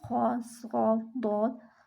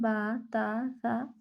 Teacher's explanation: یہ ہر حال میں یہ 19 حروف باریک پڑھے جاتے ہیں، اور باریک پڑھے جانے والے الفاظ کی ادائیگی کے وقت زبان تالو کی طرف بلند نہیں ہوتی بلکہ علیحدہ رہتی ہے۔ دیکھیں جب ہم حروف مستعلیہ ادا کرتے ہیں خ، ص، ضاد، تو ہماری زبان تالو کی طرف بلند ہو رہی ہے، لیکن جب ہم با تا سا ادا کر رہے ہیں تو ہماری زبان تالو کی طرح بلند نہیں ہوتی بلکہ نیچے رہتی